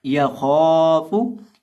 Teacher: अब यहाँ हम खौ को मोटा करके पढ़ेंगे, क्योंकि खौ मोटे हरूफ में से है